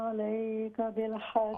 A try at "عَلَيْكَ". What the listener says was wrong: عليك عين درست करें عليك بالحق